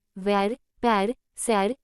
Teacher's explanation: यह अर्धविवृत ह्रस्व अग्रस्वर है।